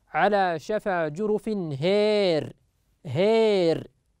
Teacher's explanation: كلمة هار في سورة التوبة على شفا جرف هار فيميل هذه الألف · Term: الإمالة